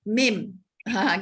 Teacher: huruf mim itu adalah huruf yang keluar dan melalui pertemuan 2 bibir. Kalau mim tu mesti 2 bibir yang ambil peranan.